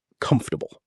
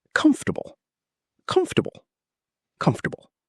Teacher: The fort part shrinks dramatically. The stress is on the first syllable, comf. Everything after that is light and quick.